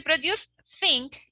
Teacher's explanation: Okay, think. To produce think, you have to use your tongue and your teeth. So this is dental or interdental